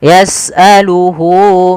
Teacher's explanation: Panjangnya berapa harakat untuk mad silah qasrah? Yaitu dua harakat. Maka hunya di sini panjangkan.